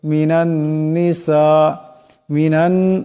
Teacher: নুনের উপর তসদিদ আছে নুন মুশাদ্দুদের এক আলিফ পরিমাণ গুন্না হবে